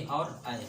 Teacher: ए और आई क्या हैं? ये कंठ और तालु से बोले जाते हैं। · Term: कंठ तालु